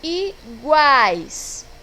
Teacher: Eu tenho aqui na segunda sílaba uma semivogal, a semivogal U, a vogal A e a semivogal I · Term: tritongo